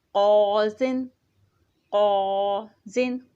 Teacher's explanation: قاف جو ہے اس کو موٹا پڑھا گیا